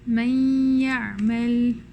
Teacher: Here we only lose the mouth portion because it changes into the letter that's coming afterwards, the ya or the waw, and the juz al-khayshumi stays. So you're going to actually give the ghunna without touching your tongue for ya or waw. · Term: idgham naqis